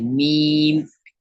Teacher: دونوں ہونٹوں کو ملانے سے میم ادا ہوتا ہے